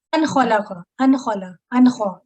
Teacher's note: اظہار کریں گے کیونکہ حروف حلقی میں سے خا ہے